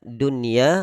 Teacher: Jadi kalimat dunya di situ tidak kita idghamkan, tapi kita baca idhar wajib.